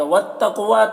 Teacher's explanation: والتقوی تا مشدد ہے تو پیچھے والے متحرک حرف واو سے مل کر پڑھا جائے گا